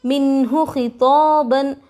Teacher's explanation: زال کے نیچے تنوین، تنوین کے بعد حروف حلقی میں سے عین آ رہا ہے، نون کی آواز کو ظاہر کر کے بلا غننے کے جلد پڑھیں گے. عین کے اوپر زبر حرکت تھوڑا بھی نہ کھینچے.